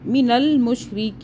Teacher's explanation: را باریک ہو جائے گا کیونکہ را کے نیچے زیر ہے